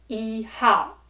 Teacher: Where E is still the first tone, followed by the fourth tone, Hao.